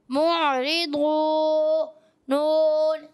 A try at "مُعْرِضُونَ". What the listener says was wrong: اچھا زیادہ نہیں کھینچنا، حروف مدہ کو ایک الف کھینچنا ہے. معرضون، ایسے لگتا ہے آپ مد کر کے جا رہے ہیں، تو یہ پڑھنے کا طریقہ نہیں. معرضون، ابھی آپ نے کیسے پڑھا تھا؟